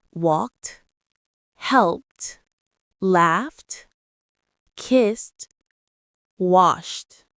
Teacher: When a verb ends in a voiceless sound like P, K, F, S, or SH, the ed is pronounced t. Your vocal cords don't vibrate. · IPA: /t/